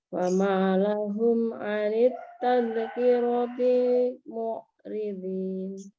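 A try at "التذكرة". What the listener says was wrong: Tazkira ya. Ini tazkira. Dalnya enggak kol-kolah. Tazkirati, ya.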